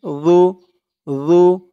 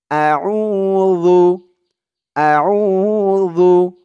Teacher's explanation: জালের উচ্চারণটা একদম নরম পাতলা হবে জিহ্বার মাথা ওপরের দাঁতের মাথার সাথে লাগবে